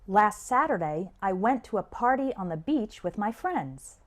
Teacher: when spoken naturally the stress is on the words saturday went party beach and friends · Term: sentence stress